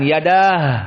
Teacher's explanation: Maka jika kita waqaf pada yadah tidak ada mad.